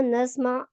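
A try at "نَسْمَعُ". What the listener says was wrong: अच्छा, नहीं, आप इसको नस्माऊ का ख्याल मिस प्रिंटिंग है, आइन पे पेश बोलनी है, नस्माऊ, ठीक है, आइन पे पेश बोलनी है, नस्माऊ, और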